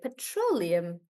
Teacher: in petroleum we do pet row limb like that and then the stress is on row